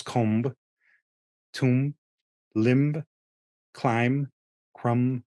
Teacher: when you kind of push your lips together to form both sounds, it just blends together. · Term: The MB